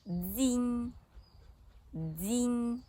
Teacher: сильний струмінь повітря що виходить із голосом натрапляє на перешкоду язик та зуби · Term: м'яким приголосним